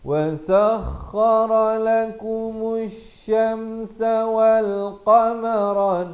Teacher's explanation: alif lam syamsiah di sini lamnya tidak dibunyikan